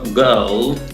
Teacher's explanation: La palabra niña, girl, o girl, más británico, sin la R, sin la ra